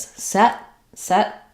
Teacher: just as set set with an unreleased T sound